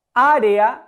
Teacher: Área, la sílaba en la que recargo la voz es a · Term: sílaba tónica